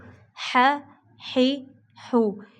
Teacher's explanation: ہا زبر ہا، ہا زیر حی، ہا پیش ہو، ہا ہی ہو۔ یہ ہا جو ہے ان کو حلق سے نکالا جائے گا